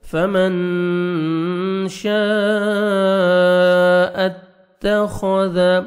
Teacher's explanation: تا کو باریک پڑھیں گے, خوا کو موٹا کر کے پڑھنا ہے, ذال کو نرمی سے ادا کریں گے.